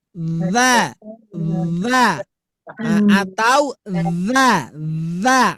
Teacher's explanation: ingat huruf dza keluar dari ujung lidah